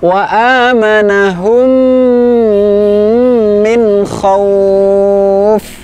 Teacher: Pada kata wa amanahum, mim sukun bertemu dengan mim, maka bacaannya adalah gunnah, ya, kita panjangkan.